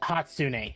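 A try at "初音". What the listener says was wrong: No, it's Hatsune. Not Hatsuna. It's Hatsune. Hatsune.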